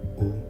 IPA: u